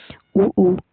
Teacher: दोनों होठों के स्पर्श से बोले जाने वाले वर्ण जैसे कि उ ऊ आपका होठों का ही प्रयोग होगा। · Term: ओष्ठि ध्वनि